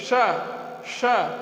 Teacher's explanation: इस सा का उच्चारण करते समय जीभ मुड़ती है, मूर्धा की ओर जाती है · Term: मूर्धा सा